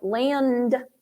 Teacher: it's hard to hear the N in the D. That's called a preconsonantal nasal.